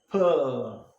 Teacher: air is kept inside, so much of pressure build, quick departure, and you have the plosive sound per.